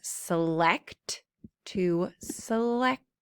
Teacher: The T kind of now makes the sh sound. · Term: shun sound